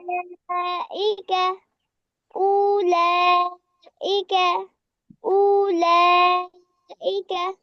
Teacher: উলাইকা, এক আলিফ টান হবে